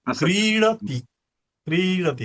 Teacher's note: त्यामुळे क्रीचा उच्चार क्रीडती, क्रीडती असं क्रीचा उच्चार स्पष्टपणे दीर्घ झाला पाहिजे आणि तीचा उच्चार स्पष्टपणे ह्रस्व झाला पाहिजे